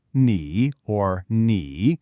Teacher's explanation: It has that third dipping tone